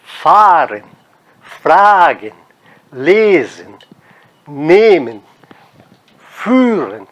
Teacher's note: Percebam, todo o E lá no final, seguido de N, ele não pode ser tônico, ele não pode ser forte. A sílaba tônica, então, tem que estar na primeira sílaba.